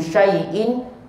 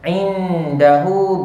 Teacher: Syai'in tak ada dengung, yang ada dengung pada indahu. Nun sakinah bertemu dengan dal, dengung sebanyak 2 harakat.